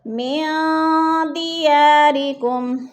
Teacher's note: وَأَخْرَجُوكُمْ مِن دِيَارِكُمْ، من پہ اخفا ہے، نون ساکن کے بعد دال آ گیا ہے تو ادھر اخفا، ناک میں آواز لے جائیں گے یعنی آواز کو ناک میں چھپا کر پڑھیں گے